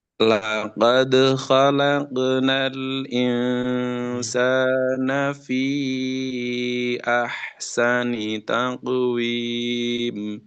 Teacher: qalqalahnya qofnya masih qalqalah tipis ya